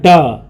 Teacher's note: जिनके उच्चारण में जीभ ऊपर उठ करके झटके के साथ नीचे आए उसे उत्प्रेक्षित कहते हैं, जैसे ड, देख लीजिए ड, तो ऊपर से नीचे आ जाता है।